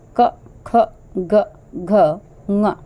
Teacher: इन अक्षरों का उच्चारण स्थान है वह कंठ है यानी कि हमारे मुख के जो कंठ है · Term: क वर्ग